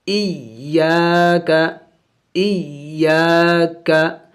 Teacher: حمزہ یا زیر ای یا الف زبر یا ای یا. یا کے اوپر شد ہے، اس کو سختی سے پڑھے، زور سے پڑھے. اور الف مدہ بھی ہے، الف سے پہلے زبر ہے تو اسے الف مدہ کہتے ہیں.